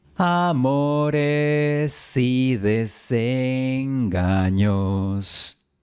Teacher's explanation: la S de amores se une a la siguiente I. Es como si estuvieras diciendo sí.